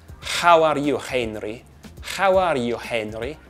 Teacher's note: Spanish has what's called a voiceless, uvular fricitive which is this sound at the back, back there instead of an h.